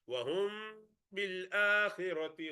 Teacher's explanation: this meme sakina followed by ba, you do prolong a little bit. إخفاء شفوي.